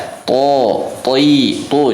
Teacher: Cuman bedanya kalau si to ini dari segi sifat bedanya, ya, karakter. Kalau si to karakternya tebal dikarenakan punya sifat itbaq dan isti'la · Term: huruf to